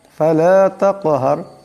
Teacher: কাফ সাকিন, কাফ হলো কলকলা হরফ, তাই অসাধে টক্কর খাবে।